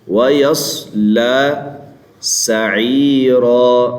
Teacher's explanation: پہلی بات ہے کہ صاد کو موٹا کرتے لام کو موٹا نہیں کرنا